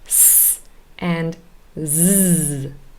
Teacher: Now alveolar because we form them with our tongue near the alveolar ridge